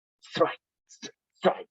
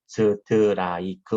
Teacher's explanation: 스트라이크, 스트라이크 이래야 되는데 거의 뭐 한 음절로 얘를 발음을 해줘야 되는데 스, 트, 라, 이, 그 우리는 이렇게 다섯 음절로 얘기하죠